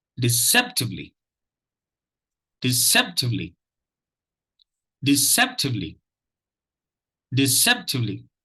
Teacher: If you notice, the second syllable gets the stress. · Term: primary stress syllable